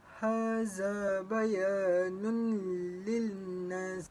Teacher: apabila tanwin bertemu dengan lam dan bacaannya perlulah memasukkan nun di dalam lam dan tidak perlu dengung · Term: idgham bila gunnah